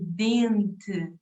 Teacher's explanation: Nós produzimos com a ponta da língua atrás, ou tocar nos dentes de cima.